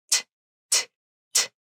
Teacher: it usually has that puff of air that comes out as you say it, called aspiration.